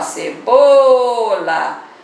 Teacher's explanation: E na palavra cebola, separou, muito fácil, vai ver já que pode chamar, ó, cebola. Já vai descobrir que é o bo, a posição é a penúltima, então a palavra é paroxítona.